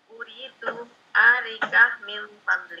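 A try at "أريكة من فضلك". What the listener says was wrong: A-nya pendek, ri-nya yang panjang. Arika min fadlik.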